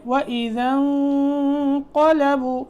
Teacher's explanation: نون میں نون ساکن ہے، یہاں اخفا کرنا ہے، اس کے بعد قاف موٹا حرف آ گیا تو پھر یہاں اخفا کو بھی تھوڑا موٹا کریں گے